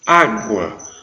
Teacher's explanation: a vogal é A, o U é semivogal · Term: ditongo crescente